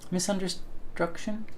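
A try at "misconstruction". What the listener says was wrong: Misunderstruction. Stunction. Stunction. There's no R. Stunction.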